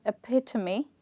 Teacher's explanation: the stressed part is the second syllable